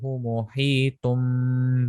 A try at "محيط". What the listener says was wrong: محيط. Ha must be sharper.